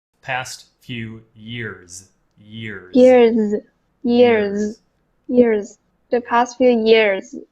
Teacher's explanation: at the end of years, even though it's written with an s, right? We need to actually pronounce it like a z.